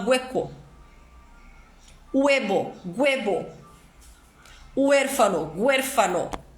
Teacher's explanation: Então, quando eu vejo a palavra hueco, eu não pronuncio o H é mudo. O chileno vai pronunciar esse H com som de G, então ele fala hueco.